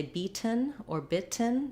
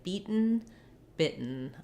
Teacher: they have a stopped T and a syllabic N